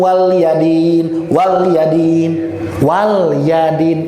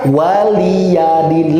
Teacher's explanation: Nah, ini terakhir Pak, catatan penting nih. Jangan sampai dibaca L-nya itu seakan-akan sukun.